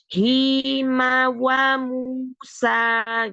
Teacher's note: menggunakan bibir terutama dengan memajukan kedua bibir ini kan di huruf wau jadi kadang-kadang kita belum memajukan kita sudah mengucapkan hurufnya gitu ya